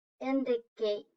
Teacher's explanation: Notice how the long A sound is in the kate.